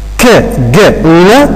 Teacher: K, g, n are velar sounds because we raise the back of tongue towards the soft palate or the velum